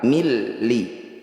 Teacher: Bunyi nun sukunnya langsung masukkan pada lam. Milli. Tidak usah didengungkan. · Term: idgham bila gunnah